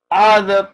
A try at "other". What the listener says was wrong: See, I'm noticing neutral vowels, and I'm not even always calling you out on them. You got to pay closer attention to some of these neutrals, and the one I'm stopping you on here is other. Other.